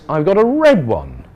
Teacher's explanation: red one falling there to show finished and that red is the important word